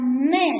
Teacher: me desangiz ikkita labingizni orasida to'ssiqqa uchraydi aytilayotganda